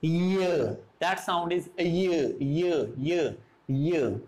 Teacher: So, front of the tongue is the active articulator and the hard palate is the passive articulator. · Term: palatal sound